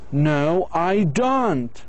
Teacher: Your intonation goes down, then goes up. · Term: surprise